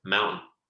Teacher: And you notice that instead of mountain, mountain, mountain. It's almost like I'm getting rid of the T, and the T is acting as a little pause